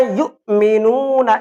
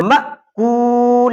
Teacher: تو جھٹکا بھی صرف حمزہ کے اندر ہوگا اور وہ بھی صرف جھٹکا، قلقلہ نہیں